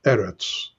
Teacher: So the last line, the third line here, where it says, and skillfully wrought or skillfully embroidered in lowest parts of the earth here, I want to focus on the word aretz, because earth is usually eretz. Eretz is a segulate noun, accented on the first syllable, eretz. Okay?